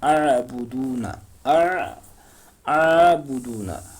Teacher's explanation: عین کے اوپر کھڑا زبر ہے تو 1 الف کے برابر ہم کھینچیں گے